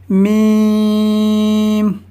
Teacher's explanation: دونوں ہونٹوں کے خشک حصے سے ادا ہوتا ہے